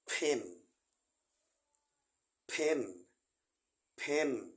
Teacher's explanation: দুই ঠোঁট একসাথে লাগাতে হয়